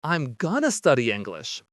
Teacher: I'm gonna study English means I am going to study English. That word to simply becomes an eh.